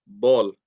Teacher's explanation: the letter b in english okay for example i'm saying ball the letter b comes from the moist part of my lips touching each other